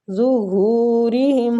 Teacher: ہو کو کھینچیں گے، وہ مد ہو رہی ہے، ری کسرہ کی وجہ سے باریک پڑھیں گے